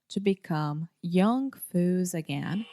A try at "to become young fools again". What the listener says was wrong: But is saying foo, foo. So the correct pronunciation is fool, fool. This is a very difficult sound, this final L sound.